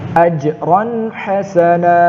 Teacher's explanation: Tanwin bertemu huruf ha, dibaca jelas, tidak dengung. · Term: izhar halqi